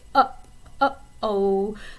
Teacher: Another great example of a glottal sound would be in an expression like uh-oh. So your little vocal folds down here kind of come together very quickly.